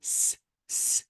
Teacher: If you want to say S, S, and put your finger on your throat, there will be no vibration. And because there is no vibration, it is voiceless.